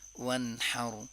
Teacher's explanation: वन्हर में देखें नून साकिन है, उसके बाद हा है, हा एक गले से अदा होता है तो इसमें इजहार करेंगे।